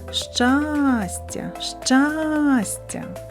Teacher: наголос падає на перший звук а